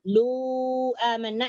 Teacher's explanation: Bertemu dengan hamzah. Lu amanna berarti panjangnya 4 atau 5. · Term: mad jaiz munfasil